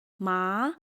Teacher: Second tone, yángpíng, rising. Your voice starts low and rises. Similar to how sometimes people ask questions in English.